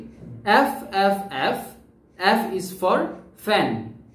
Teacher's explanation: তার মানে এখন প্রথমত খেয়াল করো, F, F উচ্চারণটা আমরা করেছি উপরের দাঁতের সাথে নিচের ঠোঁট লাগলো F, অর্থাৎ বাতাসটা ধাক্কা এখানে এসে ধাক্কা খেলো, F বাধা পাচ্ছে, একটা বাধা পাচ্ছে F।